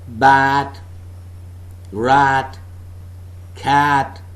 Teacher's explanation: the front of the tongue is raised just below the half open position with the side rims making a very light contact with the